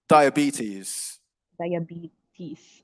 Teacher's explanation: it's a longer e sound on the penultimate syllable the second to last syllable